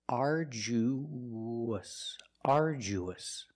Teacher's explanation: when you link the U to the us, there's a sound that links the vowels. It's like a W. It's the W sound.